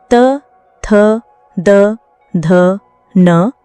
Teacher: इनके उच्चारण में दांतों का महत्वपूर्ण योगदान होता है। दंतेय व्यंजनों का सही उच्चारण करते समय जीभ दांतों को हल्के से छूती है जिससे वायु अवरुद्ध होकर निकलती है। · त वर्ग के सभी व्यंजन त, थ, द, ध, न, दंतीय व्यंजन कहलाते हैं। दंतेय व्यंजन वे होते हैं जिनका उच्चारण जीभ का अगला भाग ऊपरी दांतों को स्पर्श करके होता है। इनके उच्चारण में दांतों का महत्वपूर्ण योगदान होता है।